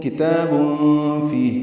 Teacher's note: کاف تا بھی باریک ہے، تا کو دو حرکات لمبا بھی کرنا ہے کھڑا زبر کی وجہ سے، تنوین کے بعد فا آنے کی وجہ سے اخفا ہے۔